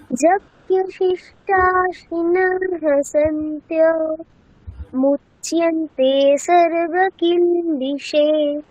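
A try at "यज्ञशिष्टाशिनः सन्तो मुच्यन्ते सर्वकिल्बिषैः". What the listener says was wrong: আচ্ছা এখানে কিলবিষয়হি, এখানে বিসর্গের উচ্চারণটা করনি। আচ্ছা শুনে শুনে বলো। মুচ্যন্তে সর্বকিল্বিষৈঃ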